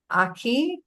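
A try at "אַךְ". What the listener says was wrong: This is Ach. There's no E sound at the end. This is just a silent vowel. Ach.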